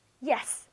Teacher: If you say yes in English with your voice going down, then you're making a firm, emphatic statement.